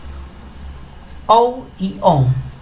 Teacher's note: Cuando decimos la palabra ON, sentimos un poquito de vibración en la nariz.